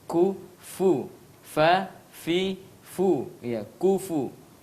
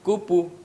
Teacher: Jadi harus kufu. Orang Arab itu tempat keluarnya tengah ujung gigi depan ketemu dengan tengah bibir bawah.